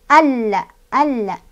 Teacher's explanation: Ingat-ingat, lam yang tidak dibaca atau alif lam yang tidak dibaca adalah alif lam syamsiah. Jadi cara bacanya langsung masukkan ke huruf lam dengan ditekan